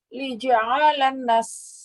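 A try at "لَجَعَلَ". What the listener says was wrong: Jangan li, kalau li huruf jar, la.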